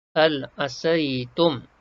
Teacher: Jelas dan terang kita sebut mim mati ni tak ada dengung. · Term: izhar syafawi